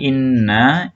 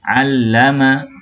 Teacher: kalau di inna ada dengungnya, kalau di sini allama tidak ada dengungnya